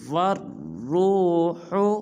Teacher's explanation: وا کو را مشدد کے ساتھ ملائیں گے اور را کو پر ادا کریں گے